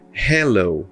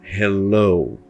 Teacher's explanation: som mais forte da palavra então no caso dessa palavra aqui a parte final dela é a mais forte